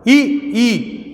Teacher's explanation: ई जब हम बोल रहे हैं तो हमारी जिह्वा ऊपर को, अगला जीभ का अगला भाग ऊपर की तरफ उठ जा रहा है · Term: अग्रस्वर